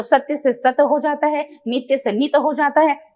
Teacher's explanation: ये जो यज्ञ का य है देखने वाली बात है कि अगर यह यज्ञ का य अंत में आता है ऐसे सिचुएशन में त को पूरा कर देते हैं या को साइलेंट कर देते हैं